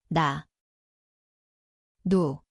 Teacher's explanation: Ang lugar ay dulo ng dila, itaas na gilagid.